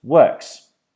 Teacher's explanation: When we change it to the plural, it becomes works, because, once again, the k noise is fortis, which means that our voice is off